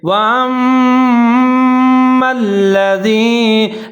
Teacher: واو کے اوپر زبر ہے حمزہ کے اوپر زبر ہے لیکن آگے میم مشدد ہے میم کے اوپر زبر ہے جہاں پر ہم غنہ کریں گے ادغام کریں گے آواز کو ناک میں لے جائیں گے